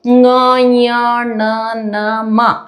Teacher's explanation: ಮೂಗಿನ ಸಹಾಯ ತಗೋತೀವಿ. ಹಾಗಾಗಿ ಇವಕ್ಕ ಮೂಗಿನ ಸಹಾಯದಿಂದ ಉಚ್ಚಾರ ಮಾಡೋದ್ರಿಂದ ಅನುನಾಸಿಕಗಳು ಅಂತ ಹೇಳ್ತೀವಿ.